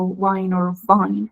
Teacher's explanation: the V sounds like W sometimes it's even used interchangeably